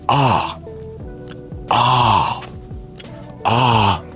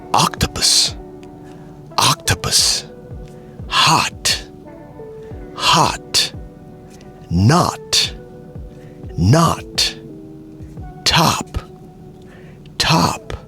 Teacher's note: in the American accent, the O doesn't sound like a O. 9 times out of 10, it sounds like a ah.